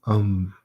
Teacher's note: it's been completely reduced to a bilabial consonant